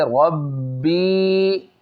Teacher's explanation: قلقلہ ہو رہا ہے، اور دوسری بات اس کو ایک الف کھینچنا ہے